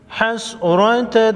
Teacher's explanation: ذالک، لیجعل اللہ ذالک حسرة فی قلوبہم، را پر زبر ہے، موٹا پڑھیں گے